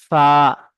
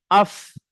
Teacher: নিচের ঠোঁটের ভিজে অংশ এবং সামনের উপরে দুই দাঁতের আগার সাথে লাগিয়ে উচ্চারিত হয় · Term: ফায়ের মাখরাজ